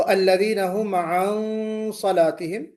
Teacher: मोटा होगा, क्योंकि स्वाद हरूफ मुस्तालिया में से आ गया, नून साकिन के बाद चूंकि स्वाद आ गया तो इसमें इस्तिला होगा, और इस्तिला की वजह से इख्फा भी मोटा किया जाएगा